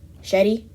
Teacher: Not pronouncing the shadda on the ra, saying it with the kasra only